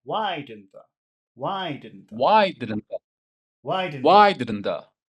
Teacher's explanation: let's make a neutral question and just emphasize the word why.